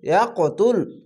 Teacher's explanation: এখানে কলকলা ধাক্কা মেরে উপরে সাউন্ড যাবে